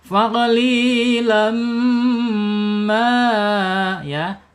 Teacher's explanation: Idgham itu melebur, bi itu dengan gunna itu dengung. Jadi idgham bi gunna itu melebur tanwin ya ke mim dengan dengung begitu ya.